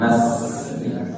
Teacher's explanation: ujung lidah berada di antara ruang gigi seri atas dan ruang gigi seri bawah. Sifatnya juga hamas, ada angin yang keluar. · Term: sin